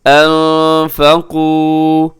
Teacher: آواز کو ناک میں چھپایا جاتا ہے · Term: اخفا